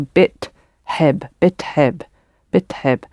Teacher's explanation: So when you get additions on the beginning and the end, it can change a little bit where the small vowels fall, like teheb but bitheb. So the I has sort of moved a little bit from after the first t and it's moved before it.